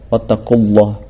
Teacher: Di sini ada lafaz Allah yang dimana lamnya dibaca tebal. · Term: lam tafkhim